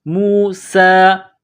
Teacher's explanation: سین میں سیٹی کی آواز پیدا کریں گے، سین کو باریک پڑھنا ہے